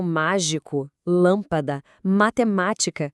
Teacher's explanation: São aquelas palavras em que a sílaba forte é a antepenúltima. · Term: proparoxítonas